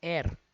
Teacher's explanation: અહીંયા એચ છે એને સાયલન્ટ રાખવામાં આવે છે અને ઉચ્ચારણ હંમેશા એર એવો થાય છે